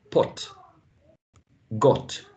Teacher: So my point is this O, short O as in pot, got, is quite British.